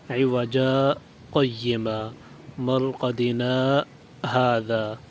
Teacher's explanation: آواز روکیں گے لیکن سانس نہیں لیں گے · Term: سکتے